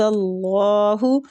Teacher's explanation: اللہ کی لام الف جلالہ کو بھی ہم پر پڑھیں گے